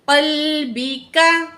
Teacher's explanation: दूसरा काफ बारीक है